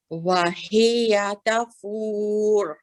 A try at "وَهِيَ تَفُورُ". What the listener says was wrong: That's better.